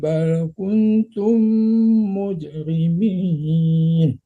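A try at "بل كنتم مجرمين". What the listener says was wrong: Kunnya kurang dengung. Ya, kunnya kurang dengung tadi bapaknya.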